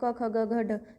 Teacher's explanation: तो गले से आवाज आती है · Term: कंठ